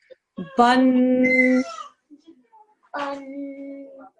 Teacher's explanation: there is a 2-second nasal sound that you make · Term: tanveen